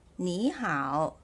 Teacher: If you listen carefully, the word 你 is read as the second tone, 你, right? 你好, not 你好.